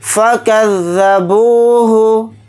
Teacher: फ़ा को जल्दी पढ़ेंगे, काफ को ज़ाल के साथ मिलाकर पढ़ेंगे, ज़ाल को जल्दी पढ़ेंगे। बा के साथ वाव मद्दा है, बा वाव पेश बू को थोड़ा खींच कर पढ़ेंगे।